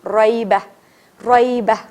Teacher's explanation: را موٹا, کیونکہ را کے اوپر زبر ہے